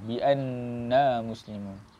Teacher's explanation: Nun musyaddadah. Nun yang bersabdu. Kita kena baca dengan gunnah dengan kadar 2 harakat.